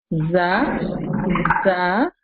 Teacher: a small space is left between the tongue and the incisors when pronouncing them